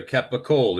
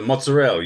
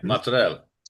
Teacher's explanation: they don't uh they don't pronounce the vowels at the end you know they clip it off